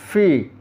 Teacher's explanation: Ya, padanan Indonesianya f i v. Ada di makhraj syafatain, bibir bawah bertemu dengan gigi atas.